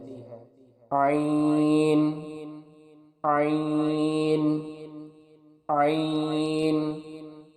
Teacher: عین کے مخرج کی ادائیگی حلق کے درمیان والے حصے سے ہوتی ہے